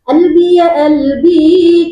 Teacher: Kalau amiyah seperti misalnya albi ya albi, jadi qalbi dibaca albi.